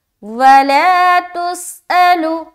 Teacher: وَلَا تُسْأَلُ، سین میں سیٹی کی آواز، لام الف مدہ کھینچنا ہے.